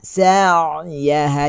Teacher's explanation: Ain ni tawassut. Dia ada Meluncur sikit, lepas tu dia terlekat. Sa'yaha, dia tidak sa'ya, tidak ya.